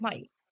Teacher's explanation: And then in this figure we can see the position of the vocal organs all the speech organs while pronouncing ma the bilabial nasal sound in the word my